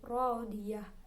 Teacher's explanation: Tak marbutah jika waqaf menjadi hak sukun.